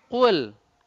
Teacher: Qaf itu sama kaf itu beda sedikit makhrajnya. Kalau qaf pangkal lidah paling dalam.